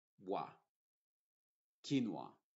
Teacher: La U es muda. La que sí se está pronunciando como W es la O más bien.